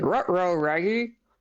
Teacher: he doesn't really round his lips very much